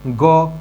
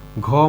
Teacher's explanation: ग क्या है ग अल्प प्राण है घ का है घ महाप्राण है